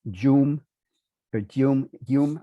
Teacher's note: ends up as a voiced dorso palatal stop